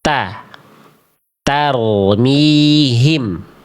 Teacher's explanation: melafalkan huruf ta ya masih dilafalkan dengan cara menjulurkan ujung lidah keluar mulut